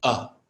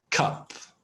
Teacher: it's not quite an a it's not quite ah it's not quite oh it's something between